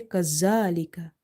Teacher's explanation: Otherwise, you will end up mixing it with the letter za. If you say kazalika, this buzzing sound is there, then it will replace itself with the letter za